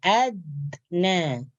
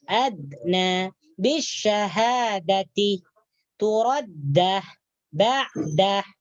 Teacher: Jadi ketika kita mengatakan kalimat adna, hujung lidah kita menyentuh gigi bagian atas. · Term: huruf dal